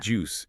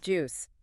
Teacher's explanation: It ends on a sharp, hissing sound.